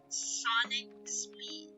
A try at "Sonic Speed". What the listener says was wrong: I mean, I think it's not deep enough, but I think you got the cadence, right?